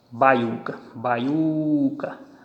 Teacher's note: Vejam que a tonicidade veio para o U.